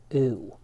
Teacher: in English for most speakers the u sound is a bit of a diphthong it shifts a little bit from one position to another